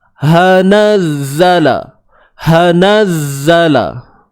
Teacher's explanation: Huruf zai ni tak perlu keluarkan hujung lidah ni, huruf zai tuan-puan. Okey, lidah duduk dalam.